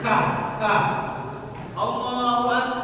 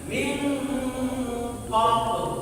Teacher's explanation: Ada sifat huruf. Sifat huruf ka dia ada desisannya.